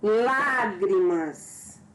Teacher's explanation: É uma palavra trissílaba porque tem 3 sílabas. E proparoxítona porque a sílaba mais forte é a antepenúltima sílaba.